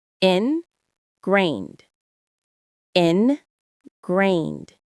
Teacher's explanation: The stress is on that second part, grained. It sounds just like it's spelled.